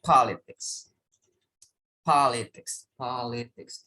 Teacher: so this is stress on the first syllable